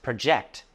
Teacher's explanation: Project or project can be either a noun or a verb, and the stress changes depending on its use. As a verb, which means to calculate or estimate, it is pronounced project, stress on the second syllable